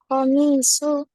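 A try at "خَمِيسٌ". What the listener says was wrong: komisun. Kan tidak ada alif lamnya. Dibacanya komis.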